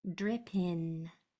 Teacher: And my mouth is open at the end. It's an N, not an M.